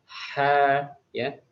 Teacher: Lalu di sini huruf ha ya, huruf ha dia punya sifatnya yaitu lembut ketika diucapkan ya, sama seperti huruf ain, yaitu letaknya di tenggorokan bagian tengah.